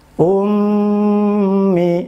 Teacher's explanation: rumusnya kan mendengung itu 2 harokat